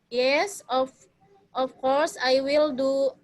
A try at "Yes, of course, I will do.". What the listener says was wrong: Some pronunciation are needed to be repeat ya. Jadi ada yang harusnya koma, titik tadi yang harusnya I will do, titik ya. And then nadanya agak lebih dipercepat ya.